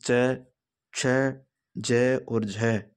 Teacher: उच्चारण का समय अपेक्षाकृत अधिक होता है और उच्चारण के बाद वाला भाग संघर्ष होता है, स्पर्श संघर्षी व्यंजन कहलाते हैं।